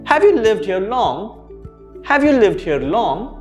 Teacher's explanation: notice how my intonation goes up · you raise your voice in the end when your question is trying to get a yes or no answer